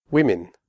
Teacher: In women, the O is pronounced I, as in the word win. The E in women is also pronounced like an I.